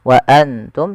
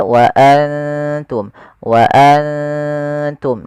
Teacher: kita samarkan nunnya kepada huruf ta dan ditahan dua harakat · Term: ikhfa